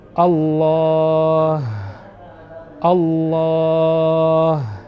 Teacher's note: huruf ha makhrajnya sama seperti huruf hamzah yaitu berada di pangkal tenggorokan